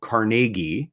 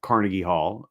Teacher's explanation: that his the pronun correct pronunciation of his name was uh with the emphasis on the second syllable